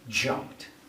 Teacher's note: Once again, simple form jump. The final sound in this verb is p. So the ed sound is t.